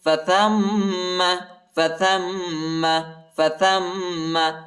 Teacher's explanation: ثا کو میم کے ساتھ ملائیں گے اور غنہ کریں گے